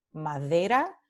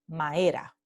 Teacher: en lugar de tener la aproximante the, madera, muchos hablantes dicen maera, con elisión aquí